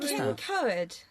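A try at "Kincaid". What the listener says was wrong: She only got two of the sort of vowel sounds the wrong way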